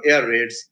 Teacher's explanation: In compound words, so when words are formed or made up of two nouns, let's say air raid, the first element is accented